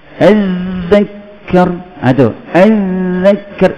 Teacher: Bila ada sabdu ni, dia bunyi panjangkan suara, panjangkan bunyi huruf zal.